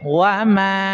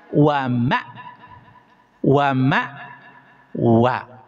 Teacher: Bedanya kalau alif itu ada sifat rakhwah, ketika mengucapannya ada suara berjalan, wa ma yang menjadi huruf mad. Kalau hamzah itu ada syiddah, neken langsung.